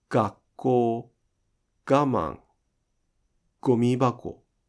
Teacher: the beginning of a word is not nasalized